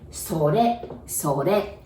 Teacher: And then it, I know it's written sore, but we say sore, sore. Again, R becomes L pronunciation, sore